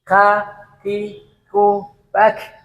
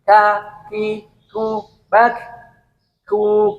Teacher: Kaf yaitu pangkal lidah yang agak ke depan mengenai langit-langit. Ada pangkal lidah tadi untuk qaf, ini untuk kaf depannya sedikit depannya. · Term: huruf kaf